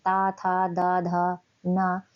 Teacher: तो हमारी जीभ जो होती है वह दांत को टच करती है